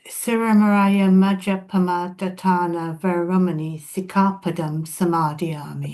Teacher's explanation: you pronounce it with a distinctly single P there.